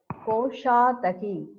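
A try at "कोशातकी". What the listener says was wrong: Koshataki, not daki. Koshataki. Koshataki, not dagi.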